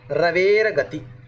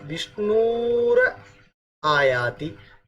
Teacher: विसर्ग र में बदल गया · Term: रुत्व संधि